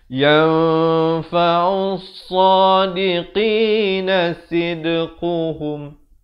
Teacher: Di sini alif lam syamsiah, lamnya tak dibunyikan.